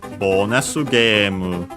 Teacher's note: low, high, high, high, up until the ge, and then everything else low